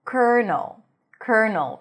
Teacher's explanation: So here, instead of the L, you pronounce an R, cur, and then null, another dark L. So an N sound, a reduced vowel, and an L. · Primary stress is on the first syllable.